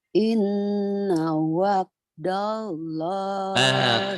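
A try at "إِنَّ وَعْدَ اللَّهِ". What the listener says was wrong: Inna wak bukan wak tapi ain ketahuan orang Jawanya ya. Ayo, jangan jangan wak.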